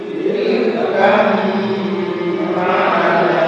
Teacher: Maka ba-nya dimasukkan ke mimnya, seakan-akan di situ hanya ada huruf mim, tidak ada huruf ba.